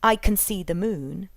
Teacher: can bears little resemblance to the full version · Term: weak forms